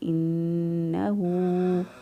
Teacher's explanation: نون مشدد حروف گنہ میں سے ہے، اس کو گنہ کرتے ہوئے ادا کریں گے۔